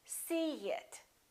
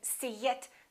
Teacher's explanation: see it here's a vowel e and here's another vowel it in this case we put a little Y a little you sound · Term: linking vowel to vowel